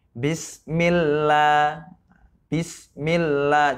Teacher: Bismil, seakan-akan lamnya itu ada dua, huruf L-nya tuh dua. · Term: tasydid